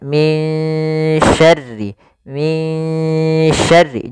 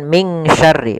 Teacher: Kemudian min syarri langsung kita di sini ada bacaan ikhfa, ya, pada lafal min syarril waswasil khannas ada lafal min, ya, tipiskan sin, ya, maaf, tipiskan dengungannya, min syarri, jangan ming syarri, bukan ming, tapi dia samarkan ke huruf shin, yaitu bacaan ikhfa. Ikhfa artinya kita membaca di antara nun yang dijelaskan suaranya, yaitu izhar, atau idgham yang dimasukkan ke huruf setelahnya.